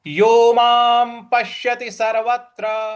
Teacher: जो त्र है उस पर हमें आघात देना है